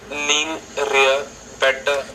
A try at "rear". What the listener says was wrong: No, not lean rear. It's lean rear. I think what you're doing is you're tapping your tongue maybe 2 or 3 times on the roof of your mouth. Rear. But in English, we don't do that. We don't even tap it once. We just say rear.